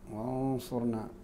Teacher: اخفاء النون قبل الصاد